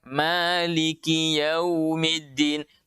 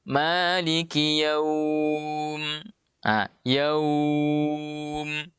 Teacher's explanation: Jadi lin itu kalau kita sambung dia pendek, kalau kita berhenti dia panjang. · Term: mad lin